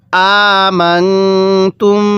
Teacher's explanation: নুন সাকিনের পরে ইকফার হরফ থাকলে ওই নুন সাকিনটা আমাদের গুন্নাহ করে পড়তে হয়